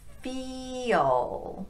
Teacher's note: So if we take a word like feel, we've got a really high tongue position on fee, but then we have to drop the tongue down low for that dark L. So we use this little vowel to get us there.